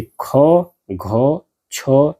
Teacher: जिन वर्णों के उच्चारण में स्वास यानी कि वायु अधिक मात्रा में मुख से बाहर निकलती है, उन्हें महाप्राण ध्वनियां कही जाती है।